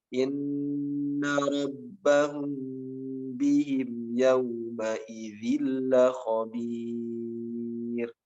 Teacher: mim sukun bertemu dengan ba, namanya ikhfa safawi, harus ditahan juga. Inna rabbahum bihim yawma idzil khabir.